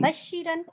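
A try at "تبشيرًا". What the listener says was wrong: نہیں اس میں تو شدہ ہے ہی نہیں, بشی نہ کہیں. آدھا صحیح کر دیا ہے, تب رہنا شروع میں. ہاں بشر یبشر تبشیرن فہوا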